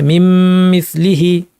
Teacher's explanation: আরবি ভাষা না জানলে কেউ বলতেই পারবে না এখানে কোনো নুন ছিল, পুরাটাই মিম হয়ে গেছে। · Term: ইদগাম